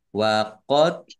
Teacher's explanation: wa qad dal sukun bacaan kolkolah dibaca memantul ditampakkan pantulannya